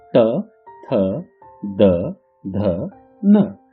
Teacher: जीभ को दांतों पर दबाने से निकलने वाले व्यंजनों को दंत्यत कहते हैं